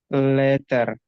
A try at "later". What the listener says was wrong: R-nya nggak perlu diperjelas. Later. Lebih dibias lagi, lebih bias. Kedengaran ada tapi nggak terlalu jelas gitu.